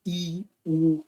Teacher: quando você pronuncia I, U, a vogal está bem lá em cima. Ela está bem alta. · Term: vogais altas